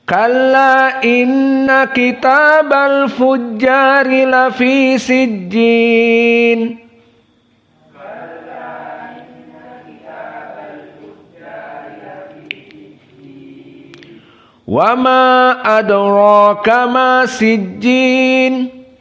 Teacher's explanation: qiraah Abu Ja'far tidak ada dalam keadaan al-imalah, la al-kubra wala as-sughra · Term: fathah